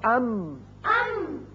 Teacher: اب ہونٹوں کا خشکی کا حصہ ملا تو میم ادا ہوا